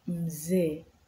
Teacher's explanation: Double vowel, however, are pronounced for a longer duration.